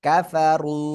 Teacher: রর উপরে পেশ মোটা আওয়াজে পড়তে হবে